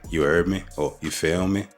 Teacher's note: there's a drawing out of certain words like heard or feel